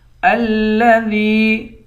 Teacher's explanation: ذال کو یا کے ساتھ ملا کر یا کو ایک الف کی مقدار کھینچ کر پڑھیں گے، یا حروف مدہ ہے۔